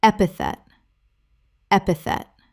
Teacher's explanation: Epithet. 3 syllables with the stress on the first.